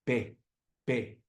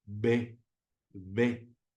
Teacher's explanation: la B primero haces vibrar el asunto antes de atacar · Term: sonora